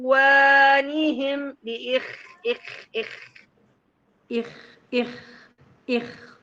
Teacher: فيها رخاوه الاول يعني فيها زمن طويل بيجري فيها الصوت